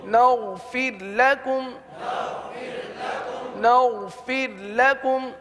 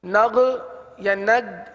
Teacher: غین کی ادائیگی درست ہونی چاہیے، غین کو گاف نہیں بنانا، نہ ہی قلقلہ کرنا ہے. نغ یا نگ دونوں غلط.